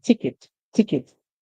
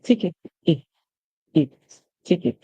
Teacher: So in the British English, the E is pronounced as a short I sound.